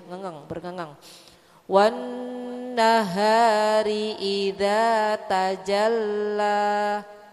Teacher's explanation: Wan-nahari idza tajalla. Wan-nahari itu ada nun bertasydid ya Bu ya, gunnah ya Bu ya